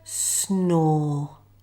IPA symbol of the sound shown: ɔː